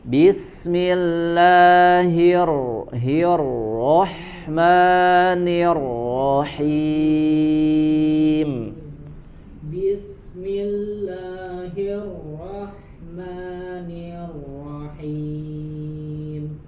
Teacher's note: Agak lebih disamarkan sedikit huruf ro-nya.